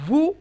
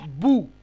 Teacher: দুই ঠোঁট পুরোপুরি মিলবে না ওয়াবের ক্ষেত্রে, আর বায়ের ক্ষেত্রে দুই ঠোঁট পুরোপুরি মিলে যাবে।